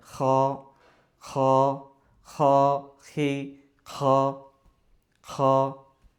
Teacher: কণ্ঠনালীর শেষ ভাগ থেকে আর কি, হলকের শেষ থেকে খ, খ।